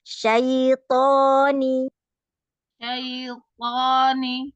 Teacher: Kemudian ujung lidah menyentuh tempat tumbuhnya gigi seri atas ya untuk ta dan to sama. Coba nanti kalau to pangkal lidahnya dinaikkan ya. Kalau ta, kalau to ya, dinaikkan pangkal lidahnya.